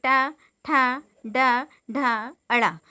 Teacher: तीसरे जो हैं हमारे मूर्धन्य व्यंजन, तो ये कठोर तालु के मध्य का भाग मूर्धा कहलाता है। जब जीवा की उल्टी हुई नोक का निचला भाग मूर्धा से स्पर्श करता है तो ऐसी स्थिति में ये मूर्धन्य व्यंजन बनते हैं